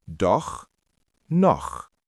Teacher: Really emphasize that KH sound from your throat.